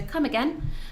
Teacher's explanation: again with a question mark at the end so come again raising your voice at the end of again